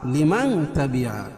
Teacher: اس لیے کہ نون ساکن کے بعد حروف اخفاء کے 15 حرفوں میں سے تا ہے، تو یہاں ناک میں آواز کو چھپا کر پڑھیں گے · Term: اخفاء حقیقی